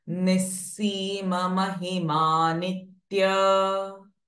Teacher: Visarga Ha will change it to Sa.